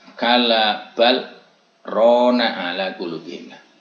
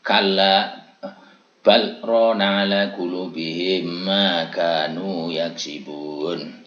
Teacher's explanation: Dalam bal kita berhenti sejenak tanpa mengambil nafas karena itu saktah